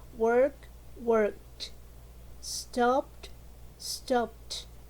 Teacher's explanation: pronunciation with t at the end we have voiceless consonant sound